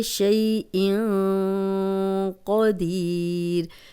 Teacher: قاف کو موٹا پڑھیں گے، یہ موٹے 7 حروف میں سے ہے۔